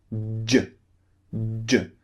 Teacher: So your tongue, first of all, is pushing up and blocking air, okay? Then suddenly your tongue is pulling down and releasing the burst of air.